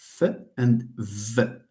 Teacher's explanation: when the lower lip meets the upper teeth the place of articulation is the lower lip and the teeth.